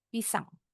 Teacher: Dua-duanya ini suku katanya diucapkan dengan tekanan yang sama. Enggak ada yang salah satu suku kata penekanannya lebih tinggi. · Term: penekanan suku kata